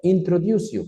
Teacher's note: la C es una S, por eso que fonéticamente puedo pegar consonante con vocal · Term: linking word